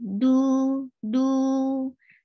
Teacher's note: Circle your lips for Dhamma, and you're making it two haraka long. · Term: natural mad